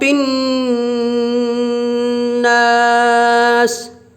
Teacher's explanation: قل اعوذ برب الناس، یا نون کو اوپر تشدید ہے، اس لیے نون مشدد میں 1 الف کے برابر غنہ ہوگا